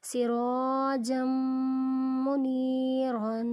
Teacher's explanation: یہاں پر تنوین کے بعد میم حروف یرملون میں سے ہے اس لیے یہاں پر غنہ کریں گے